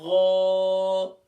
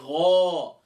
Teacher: اب دیکھیں ہم نے غین کا مخرج پڑھا تھا کہ غین حروف مستعلیہ میں سے ہے، موٹے حروف میں سے ہے، اور غین کو ادا کرتے وقت اس کا مخرج کیا ہے؟ ادنا حلق، یعنی گلے کا وہ حصہ جو ٹاپ آف دا تھروٹ کہلاتا ہے، وہاں سے غین ادا ہوگا، لیکن اس کو ادا کرتے وقت ہم موٹا کریں گے